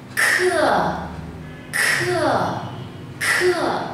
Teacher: Cảm giác là cái âm nó dường như nó nổ ở trong cổ họng chúng ta, nó nổ sát trong cổ họng chúng ta.